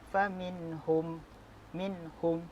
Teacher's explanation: Faminhum, minhum, hukum bacaan nun mati bertemu dengan ha adalah izhar halqi. Cara bacaannya adalah mengizharkan sebutan tanpa adanya dengung.